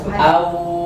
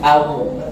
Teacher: Awwa ada gunnah enggak? Enggak. Itu kenapa? Karena saya tahan di bibir.